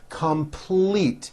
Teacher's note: this has a strong l in the second syllable